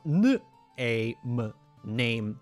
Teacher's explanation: наші голосні трошечки піднялися і е став і